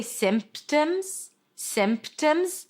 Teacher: So when there a chunk of consonants a consonant cluster where there is a sequence of consonants and then in the middle there is a stop sound like a p in this case you can drop it simp if it's easier for you if it's harder for you and you want to keep the p keep the p okay symptoms or symptoms but make it subtle just small tiny soft just like the corona virus symptoms. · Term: silent P